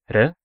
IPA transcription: ɾ